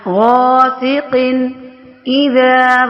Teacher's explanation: قن، اذا، یہاں پہ دیکھیں تنوین کے فوراً بعد حروف حلقیہ میں سے حمزہ آ گیا تو یہاں پہ اظہار کر کے پڑھ رہے ہیں، نون ساکن کی آواز کو ظاہر کر رہے ہیں